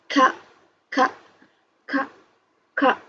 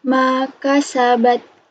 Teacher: Kalau sudah, kita lanjut ke huruf kaf. Kaf itu makharijul hurufnya dari pangkal lidah seperti huruf K, disertai keluarnya nafas atau hamas.